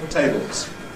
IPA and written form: ˈteɪbɫz (tables)